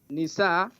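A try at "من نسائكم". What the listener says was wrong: You skip. You said min. Not nisa. Min nisaikum.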